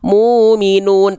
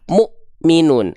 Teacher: hentakan bukan muminun tapi Mukminun Kenapa karena bertemu dengan Hamzah sukun huruf-huruf yang bertemu dengan Hamzah sukun itu akan seperti seolah terhenti atau terhentak Kenapa karena huruf hamzah memiliki sifat yang namanya adalah syidah kuat · dengan syiddah syiddah artinya adalah tertahan nafas tertahan tertahan nafas nah sifat syidah pada huruf hamzah ini ya dia akan terasa tertahan suara ketika hamzahnya dalam kondisi sukun